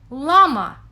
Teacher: produced with a tip of the tongue pressed against the alveolar ridge behind the teeth